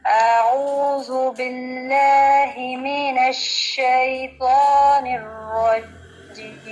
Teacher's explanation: تعوذ میں آپ کا جو حمزہ تھا سٹارٹنگ میں وہ تھوڑا لمبا ہے، اس کو اور شارٹ کریں کیونکہ حمزہ زبر آ۔